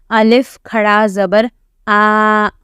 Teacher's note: we read with elongation we read Al our mouth should be wide open